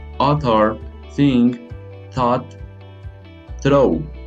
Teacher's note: the dental consonants are formed with the tongue tip behind the front teeth